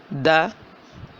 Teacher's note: जुबान की नोख दो दंतों की जडों से लग रही है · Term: दाल